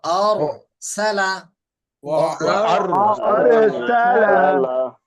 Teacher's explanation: আরসালা মোটা হবে র।